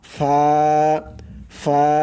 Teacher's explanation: নিচের ঠোঁটের পেট সামনের উপরের দুই দাঁতের আগার সঙ্গে লাগাইয়া উচ্চারণ হয় ফা